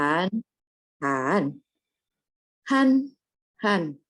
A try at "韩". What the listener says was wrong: Oke, nada empatnya agak ditekan Bu. Belum. Nada empatnya jangan naik. Jadi belakangnya turun ya Bu ya.